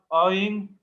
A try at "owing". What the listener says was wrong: উচ্চারণটা ওয়িং টু, আউইং না।